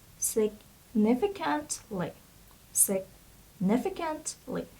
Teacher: So a stress is on the second syllable, and it would be significantly.